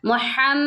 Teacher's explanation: یہاں پر میم مشدد ہے میم مشدد کی وجہ سے ہم نے غنہ کیا ہے نون مشدد اور میم مشدد میں ہمیشہ غنہ ہوتا ہے یہ